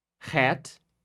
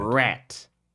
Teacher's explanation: some Brazilians we confuse the H sound with the R sound